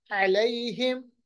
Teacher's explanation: عین کا مخرج وسط حلق، یا ساکن ماقبل زبر یا لین.